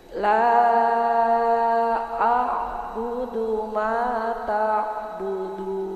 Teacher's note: Ma-nya tidak boleh panjang-panjang. Ma-nya itu satu alif atau dua harokat, mat asli ya Bu ya.